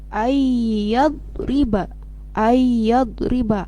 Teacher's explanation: Contohnya nun mati ketika bertemu dengan huruf ya, ayyad riba, maka suara nun matinya hilang dan berubah menjadi huruf ya, masuk kepada huruf ya. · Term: idgham ma'al gunah